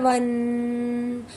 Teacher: جب ہم با ادا کریں گے تو ہم دونوں ہونٹوں کو جوڑ کر ملا کر ادا کریں گے با، اور جب واو آئے گا تو ہونٹوں کو گول کرتے ہوئے ان کی آواز ادا ہوگی